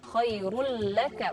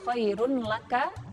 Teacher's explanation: Nah, karena lam ini adalah huruf idgham bila gunnah, maka dibacanya tanpa dengung. Nah, idgham bila gunnah ini adalah idgham yang dibacanya tanpa dengung